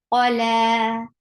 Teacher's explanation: Ain from your throat. For fatha, open your jaws. And this is short sound.